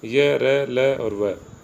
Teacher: दूसरा है अंतस्थ व्यंजन, अंत यानी मध्य या बीच में, स्थ यानी स्थित। इन व्यंजनों का उच्चारण स्वर तथा व्यंजन के मध्य का सा होता है। उच्चारण के समय जिह्वा मुख के किसी भाग को स्पर्श नहीं करती।